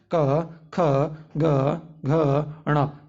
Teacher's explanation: तो जीभ का जो पिछला हिस्सा है हमारे कंठ में स्पर्श होगा, उन्हें हम कंठ व्यंजन कहते हैं। खुद बोल कर देखिए, क ख ग घ ण, ये सब जो होता है हमारे गले से निकलते हैं, कंठ से निकलती है, इसलिए हम इसे बोलते हैं कंठ व्यंजन।